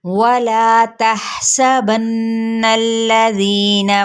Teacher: वाव होंठों की ना तमाम गुलाई के साथ ला पे मद्दे बिल अलिफ का कायदा, जिसको एक अलिफ या दो हरकत के बराबर खींचेंगे